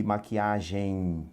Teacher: O EM no final, esse M tem um som de I, tá? Quando o E é seguido de M, em geral você vai ouvir o som do I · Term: ditongo